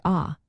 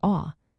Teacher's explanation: the short A sounds like ah, while the long A acute sounds like aw